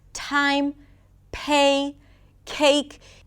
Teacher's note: you want to use these aspirated sounds when the P, T, and K appear at the beginning of words and at the beginning of strong syllables.